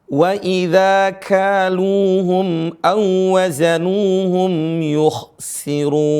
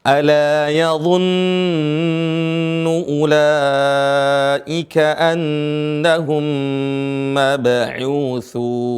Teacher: mim sukun bertemu dengan mim, ditahan 2 harokat, boleh ditahan menjadi 4 harokat, ya, boleh lebih dari itu untuk membiasakan.